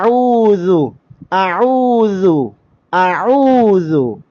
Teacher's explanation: നാവിന്റെ അറ്റത്തിന്റെ തലയും മേലെ മുൻപല്ലുകളുടെ താഴെ അറ്റവും ചേർത്തുകൊണ്ട് നമ്മൾ ദാൽ എന്ന ഹർഫ് ഉച്ചരിക്കും